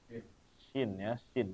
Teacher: Jadi ketika mengucapkan huruf shin ini, udara seakan-akan menyebar ya di dalam mulut. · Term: Tafashi